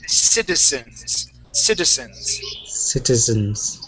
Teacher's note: this is one of the times when a Z in English will sound more like an S.